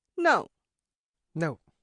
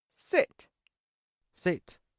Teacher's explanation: This is the fourth tone in Chinese, a downward falling tone, the dog owner's tone that they use when telling their dog what to do.